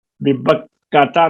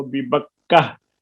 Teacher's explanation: گول تا وقف میں ہا ساکن پڑ جاتی ہے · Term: وقف بالابدال